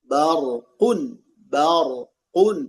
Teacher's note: Dan hati-hatilah menebalkan huruf ba pada kata bar.